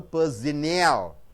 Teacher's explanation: 3 syllables are there. You have to stress the third syllable.